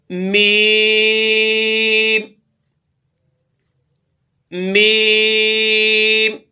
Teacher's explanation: मीम की अदायगी के वक्त भी नादरीन आपके दोनों होंठ आपस में मिलेंगे तो फिर ये मीम अदा होगा।